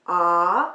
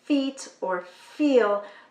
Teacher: For children for whom it is easier to start with the F at the beginning of the words, I like to start with words that go from an F to an E E is a high vowel where we don't have to move our mouths very low.